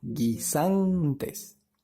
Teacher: En la palabra guisantes, como puedes notar, la sílaba tónica está en el medio, ¿verdad? Es la penúltima sílaba